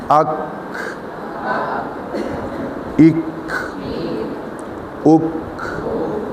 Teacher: اب زبان کی جڑ جو ہے جب سخت تالو سے لگے گی، یعنی اس حصے سے جو نرم ہے، قدرے جہاں سے سخت حصہ شروع ہوتا ہے وہاں سے یہ حرف نکلے گا کاف، اس کو باریک پڑھنا ہے